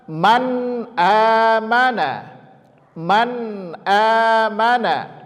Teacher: Maka izhar cara membacanya tidak boleh diengungkan.